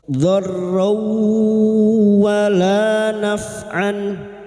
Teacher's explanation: Dan berikutnya huruf ra masuk pada huruf wawu, huruf ra yang berharakat fathah tanwin bertemu wawu idgham biguna masuk pada huruf wawu dan mendengung selama 3 harakat